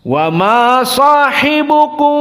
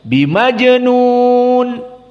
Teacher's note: ikhfanya karena syafawi dia mimnya tidak ditutup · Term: Ikhfa Syafawi